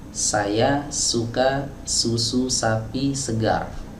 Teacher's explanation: Huruf sin keluarnya dari ujung lidah, bertemu dengan bagian bawah dinding dalam gigi seri bawah.